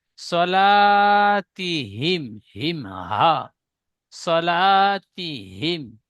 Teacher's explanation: হাটি গলার শুরু ভাগ হতে যেটা বুকের দিকে